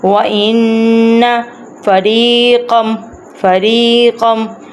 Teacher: اب نون کے اوپر ہے تشدید، تو اس لیے ہم یہاں پہ کریں گے گنہ، ناک میں سے آواز نکالیں گے۔